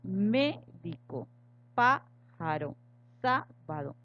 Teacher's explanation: Pasamos al tercer grupo, que son las esdrújulas. Tienen la sílaba tónica o el acento en la antepenúltima sílaba.